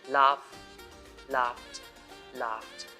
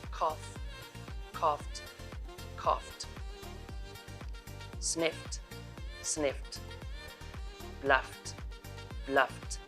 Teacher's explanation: Sound number 4 of 7. If a word ends with f sound like laugh, laughed, laughed, then the ed ending is pronounced t